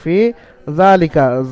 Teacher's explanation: জালকে আলিফ মাদ্দার মতো একালিফ পরিমাণ টান দিয়ে পড়তে হবে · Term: খারা যাবার